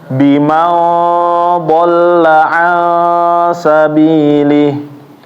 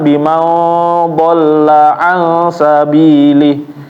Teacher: jadi dua-duanya harus ditahan ya dengungnya, Bapak, konsisten.